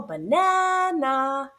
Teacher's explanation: The first and third syllable are unstressed, which is why we hear the a representing the h sound. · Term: 2 schwas